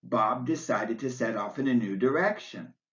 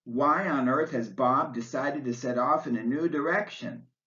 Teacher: in both sentences your voice rises and falls on the word direction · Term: rising falling intonation